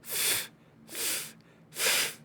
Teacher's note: the way that we make the sound of the consonant f is by breathing heavily while we bring our teeth and upper lip together